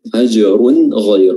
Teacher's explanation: Gha juga ini ketebalannya bukan dari bibir, enggak, gha dia tetap fathahnya terbuka sempurna, tapi ketebalannya dihasilkan dari terangkatnya lidah bagian belakang